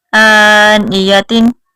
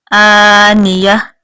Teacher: تا جو ہے وہ ختم ہو جائے گی اور ہا میں بدل جائے گی